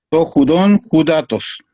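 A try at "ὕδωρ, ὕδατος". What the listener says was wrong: Judor, es R la del final. Judor, judatos.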